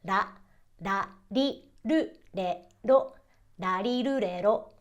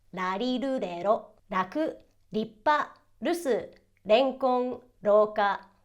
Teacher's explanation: Can you almost hear that subtle, soft D noise because of that hard tap?